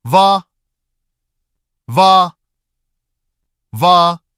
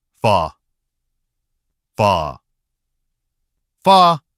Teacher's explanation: Same lip position but no voicing. The air flows through more lightly. · And again, the difference is voicing. Va is voiced. Fa is voiceless.